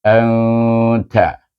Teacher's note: Ta adalah huruf ifa. Maka kita baca dengan ifa hakiki. Dengan dengung 2 harakat.